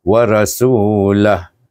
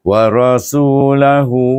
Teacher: Kita cerita berhenti dahulu. Bila berhenti kita sukunkan huruf ha dhamir itu.